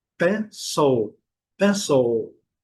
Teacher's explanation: O I vai ter o som do schwa. Claro, Não vai ter o som do I, vai ter o som do schwa.